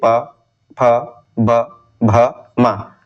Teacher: और इसको क्या बोला जाता है, ओष्ठ व्यंजन कहा जाता है। जब आप जो है इनका उच्चारण करते हैं तो हमारे जो ओठ है वो आपस में जो है मिलते हैं।